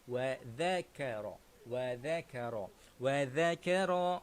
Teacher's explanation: ada huruf zal dekat sini, jadi kita kena keluarkan lidah. Bacaan dia ialah wa dzakara.